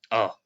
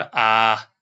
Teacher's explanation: ह्रस्व जो स्वर हैं, उनमें एक मात्रा के बराबर, एक क्षण के बराबर समय लगता है, जैसे अ। और जो दीर्घ है उसमें 2 निमेष का समय लगता है, इसीलिए उनको दीर्घ अर्थात बड़ा।